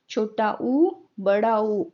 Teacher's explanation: छोटा ऊ, बड़ा ऊ ओष्ठ्य यानी कि होठों के द्वारा बोले जाते हैं।